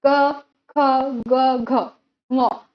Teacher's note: जीवा का पिछला भाग कोमल धातु का स्पर्श होना, उसे कंठीय ध्वनि। अर्थात जिन ध्वनियों का उच्चारण कंठ से शुरू होता है, आरंभ होता है, उसे हम कंठीय व्यंजन कहते हैं